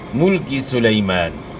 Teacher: پیش اور زیر کو معروف پڑھنا ہے